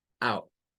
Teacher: es como sacar primero una a pero terminar con un sonido de Oh